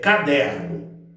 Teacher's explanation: a penúltima sílaba que é a sílaba der é a sílaba tônica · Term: paroxítonas